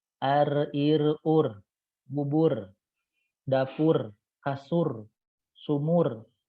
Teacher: Sifat takrir, bergetar. Apa yang bergetar? Yang bergetar adalah ujung lidah.